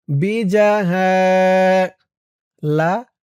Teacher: এক আলিফ টান জবরের পরে খালি আলিফ